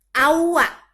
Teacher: Awa itu hukum bacaannya idgham bigunah. Jadi nunnya hilang, masuk ke suara waw.